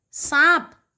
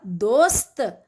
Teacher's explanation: जो जीभ है वो दांतों को स्पर्श करेगी, दांतों को छुएगी, तो ये हो गया दंत स